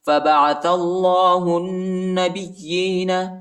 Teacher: نون پر شد آیا ہے اور غنہ بھی کریں گے